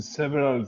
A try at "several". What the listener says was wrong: Except I want you to pronounce it several. Kind of, yes. Is it's two syllables. Several. It's not several. you were pronouncing it like the Spanish way. Several.